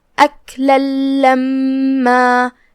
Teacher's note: آخری میں لام ہے اور اس پہ تنوین زبر ہے اور اس کے بعد حرف اللام ہے کلمت لما میں جو کہ لام حروف الادغام بغیر غنہ میں سے ہے اور ادغام کا معنی ہے حرف کو حرف میں داخل کر دینا، لہذا ہم یہ تنوین کو لام میں داخل کر کے بغیر غنہ کے لیکن تشدید کے ساتھ یہ حکم کو ادا کریں گے.